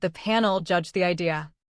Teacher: Another trap is judged. The base ends with the voiced J sound, written with DG. Because that sound vibrates, judged takes the D ending.